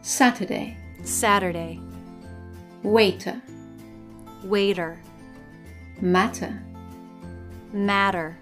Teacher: in American English, when the letter T is in the middle position in a word, it sometimes changes to a soft D. This happens either when it's between two vowels or when it's between an R and a vowel.